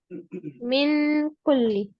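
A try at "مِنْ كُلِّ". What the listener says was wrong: मिन हो रहा है, देखिए जुबान सामने से लग रही है, जुबान को पीछे से उठाना है। और वो भी आपकी हड्डी वाले हिस्से पे। अंकल जैसे था ना अंकल, वैसे मिन कुल्ली। अब अंकल में जैसे जुबान काफ के मखरज पे लग रही है, वैसे मिन कुल्ली में लग रही है आपकी जुबान।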